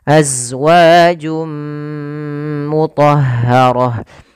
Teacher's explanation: pada laf Jum ada bacaan Idam bunah yaitu Idam kembali itu masukkan tanwinnya ke huruf mim suara nunnya hilang maka jadi suara nnya hilang awalnya azwajun ketemu dengan mim masuk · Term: idgham